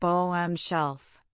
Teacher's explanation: Bottom shelf can have a soft T in bottom